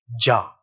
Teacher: the sound is going to be short and up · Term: path